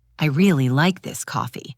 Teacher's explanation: Now, the word coffee is the focus of the sentence.